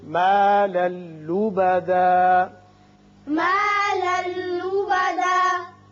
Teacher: لام پر دو زبر تنوین ہے، آگے لام ہے، یہاں ادغام بغیر غنہ ہوگا